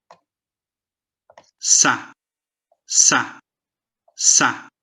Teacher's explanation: Antes da vogal A, tem aqui informação dentro desse som para o seu cérebro que diz que antes dessa vogal, foi feito um som que você produz na região alveolar, logo atrás dos dentes de cima.